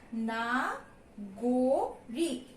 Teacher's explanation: গ এর সঙ্গে আমি একটা কিন্তু ওকার যোগ করে দিই